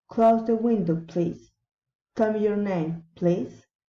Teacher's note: Asking for help. Request, rising intonation.